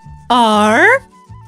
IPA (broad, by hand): ɑr